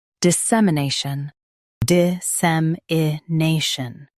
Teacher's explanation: Stress SEM and keep nay clear